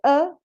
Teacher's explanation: the vowel schwa has a center the uh it's a central vowel and it's a neutral your lips are neutral